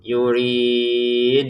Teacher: Di ujungnya ada pantulannya dal ya. Karena dalnya ini harakatnya dommah tapi kita berhenti terbacanya sukun.